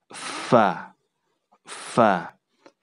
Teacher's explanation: gigi atas bertemu dengan bibir bawah kemudian diucapkan dengan hamas hamas itu ada hembusan udara yang keluar dari tempat truk tersebut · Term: huruf fa